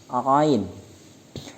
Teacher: Ain makharijul hurufnya bertempat pada tengah tenggorokan